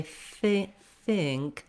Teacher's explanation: in think, my tongue is going to be high and close to the back of my teeth. So as I say think, I'm basically just gliding into that NG position of the part of think with a little bit of vowel there.